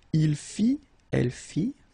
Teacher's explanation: final T not pronounced